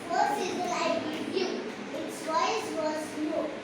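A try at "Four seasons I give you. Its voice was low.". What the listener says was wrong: Now when you say its voice was low, even your voice needs to be low. The 4 seasons, there should be an S. 4 seasons I give you, its voice was low.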